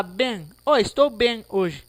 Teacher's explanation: Mas o M aqui nessa palavra, ele nasaliza o E